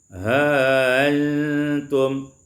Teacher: Pada ayat yang ke-66, ha antum tashilul hamzati, ditashilkan hamzah menjadi ha antum